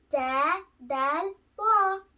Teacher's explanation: The exit for these three letters is tip of the tongue